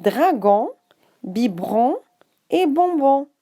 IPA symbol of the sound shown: ɔ̃